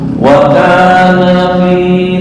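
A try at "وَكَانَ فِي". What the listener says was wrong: pendek. Karena kalau ini dipanjangin ntar jadi dua orang, berubah artinya.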